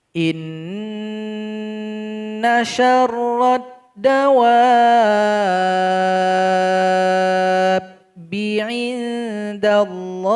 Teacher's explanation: Huruf waw yang disambut oleh mad alif disambut lagi oleh huruf ba yang bertasydid berubah menjadi mad lazim mustaqal kilmi. Panjangkan waw ini sebanyak 6 harokat atau 6 ketukan baru ditasydidkan.